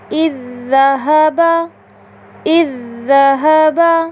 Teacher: ہم نے ذال ساکنہ کو ذال متحرکہ سے اس طرح ملا کر پڑھا کہ دونوں ایک ساتھ مشدد ادا ہوئے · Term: ادغام